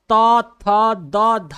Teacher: त वर्ण का उच्चारण स्थान दंत है आप त थ द ध बोलेंगे तो आपका जबान दांत में